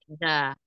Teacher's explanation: ujung lidah bertemu dengan tempat tumbuhnya gigi seri atas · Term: huruf Da